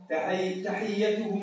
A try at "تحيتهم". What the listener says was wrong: شوف ريت الياء هذيك المشددة بينهم نقول تحيتهم فيها سلام أحسنت عودي من وقال الشيطان يلا وقال الشيطان عودي وقال الشيطان تي أي وحيد إيش قال الشيطان عنده حق